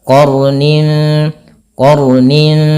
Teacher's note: sifat huruf ra itu sifat takrir tapi takrirnya jangan banyak-banyak · Sekali saja untuk sifat takrir daripada huruf ra dan dia menebal.